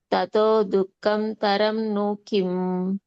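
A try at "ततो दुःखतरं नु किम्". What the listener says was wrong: దుఃఖం లేదు అక్కడ. దుఃఖతరం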